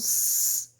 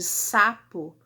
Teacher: os meus articuladores, eles se aproximam, mas eles não se tocam, não há oclusão completa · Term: fricativos